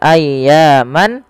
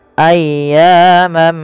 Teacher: Maka ketika ada tanwin bertemu dengan huruf mim, yaitu langkahnya adalah masukkan tanwinnya kepada huruf mim dan diganti bunyinya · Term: idgham